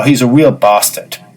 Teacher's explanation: if it is a long first vowel, it loses some of its unpleasantness and becomes almost jocular.